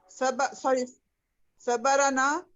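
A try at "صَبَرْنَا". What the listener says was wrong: लाम कलमा साकिन है। लाम कलमा क्या है? रा है ना, तो सबरना, सबरना।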